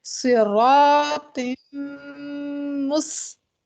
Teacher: سین میں سیٹی آئے گی صراط مس. تا کے اوپر زبر ہے اور تا ایک باریک لیٹر ہے.